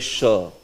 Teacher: See, this sh is where, your back of the tongue touches the back portion of the palate